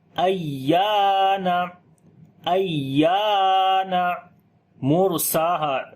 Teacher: یا کے اوپر شد آ گئی ہے، نبر کریں گے، یعنی کہ یا کی آواز کو بلند کر کے پڑھیں گے · را ساکن سے پہلے پیش ہے، را کو موٹا پڑھیں گے